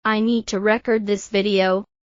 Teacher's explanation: stress the second syllable, it is a verb